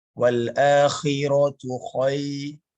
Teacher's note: Dan juga jangan lupa pada perkataan akhirah, ya di sini merupakan kho yang berkurang ketebalannya